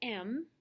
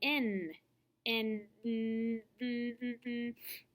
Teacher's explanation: The sounds M and N are made through your nose. When you hold your nose, you cannot make these sounds because the sound is made in the nose. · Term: nasal sounds